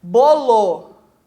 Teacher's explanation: o bo é tônico, o lo é átono. Então esse O aqui do finalzinho é uma vogal reduzida.